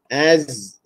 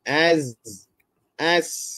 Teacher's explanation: huruf Zain dan Sin yang sifat dia memang istighfal merendah lidah ya kita matikan dengan Alif Az kalau kita tak rendah lidah